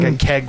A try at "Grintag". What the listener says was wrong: with a T. Teg. Keg with a T instead of a K.